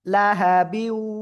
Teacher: তানবিনের পরে ইয়া ওয়াও মিম নুন, এই চারটে অক্ষরের একটা অক্ষর এখানে ওয়াও আসছে, এজন্য গুন্নার সাথে মিলিয়ে পড়তে হবে ঈদগামে বা গুন্না